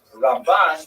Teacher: Ramban is pronounced with the emphasis on the second syllable.